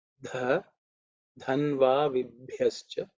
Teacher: So the tongue should raise up. Dha is the fourth letter in the Thavarga. So it has to be aspirated.